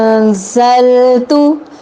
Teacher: اب یہاں نون ساکن ہے، یہ غنہ نہیں ہے، یہ اخفا ہے، یہ بھی غننے کی ایک قسم ہے۔